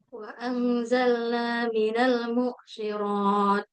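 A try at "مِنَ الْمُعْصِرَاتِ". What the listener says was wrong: Dia bukan hamzah ya, bukan minal mu sirat mu bukan, tapi minal Ain itu dia ada waktu untuk suaranya tuh mengalir gitu.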